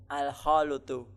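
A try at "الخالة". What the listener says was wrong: Al-khalatu. Ya, bukan al-khalutu. Nah, lamnya di fathah, al-khalatu.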